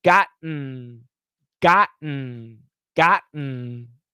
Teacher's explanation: same position is the n so gotten the tongue never moves once you stop the t the tongue never moves